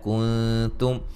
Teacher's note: کنتم نون ساکن کا باریک اخفا ہے